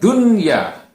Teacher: Yang pertama adalah kata dunya. Ya, kata dunya ini kan nun mati bertemu dengan ya, tapi dia tidak dibaca mendengung, tidak dibaca dunya, tidak dibaca begitu, tapi dibaca dunya, dibaca idhar atau terang. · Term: idhar mutlak